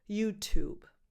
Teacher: add a very light B sound at the end, YouTube. The stress can be on either syllable, YouTube or YouTube.